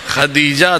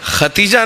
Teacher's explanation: دال اور تے کی ادائیگی نزدیک نزدیک سے ہوتی ہے. اسی کو تجوید میں کہتے ہیں قریب المخرج.